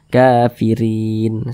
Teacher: huruf ro, dia berbaris ke bawah, maka dibaca tipis. Kafirin, jangan dibaca kafirin, jangan, tapi dibaca tipis.